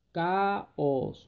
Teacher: Se produce un hiato. Y al producirse ese hiato hay una separación entre estas dos vocales que son fuertes o abiertas.